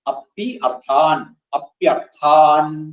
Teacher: അപി അർത്ഥാൻ കൂടി വരുമ്പോൾ ഇകാരത്തിന്റെ സ്ഥാനത്ത് യകാരം വരും. അർത്ഥാൻ പ്യർത്ഥാൻ എന്നാവും.